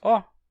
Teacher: a gente reduz esse olha a ó, a um simples ó. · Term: forma reduzida